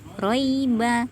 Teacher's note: huruf ro makhrojnya adalah menggetarkan punggung ujung lidah ke gusi atas sifat roh adalah jelas ya di sini roknya berbaris fathah maka · Sifat ro adalah jelas ya. Di sini ro-nya berbaris fathah, maka ro-nya adalah ro tafkhim, ro yang tebal. Kemudian roiba ada harfulin, huruf lin ya, lembut, roi.